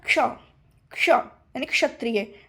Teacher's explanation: का भी आ रहा है, थोड़ा सा शा की ध्वनि भी आ रही। जब ये दोनों ध्वनि आएगी तब समझ लीजिए कि ये आपका ये है।